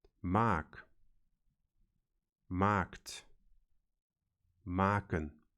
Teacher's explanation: in the case of the verb maken, we have maak, maakt, maken, with the same long A